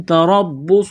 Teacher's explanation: وجہ سے، با کے ساتھ ملائیں گے تشدید کی وجہ سے، صاد کو موٹا کرنا ہے سیٹی کی آواز پیدا کرنی ہے